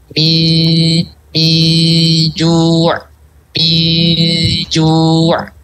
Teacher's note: Kalau jim berarti dekatin ke makhrajnya jim, yaitu di tengah.